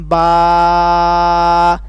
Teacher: آپ اپنے ہاتھ کو بند کریں، پھر ایک فنگر کو کھولیں، با، جب تک آپ کی پوری فنگر نہیں کھل جاتی تب تک آپ اس کو لمبا کریں، ایک الف کے برابر اس کی مقدار کو لمبا کرنا ہے